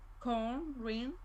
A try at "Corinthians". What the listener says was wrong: Don't prolong each syllable. Just give each syllable the same amount of time as you Corin. You're saying Corinthians. Corinthian. No, Corinthian.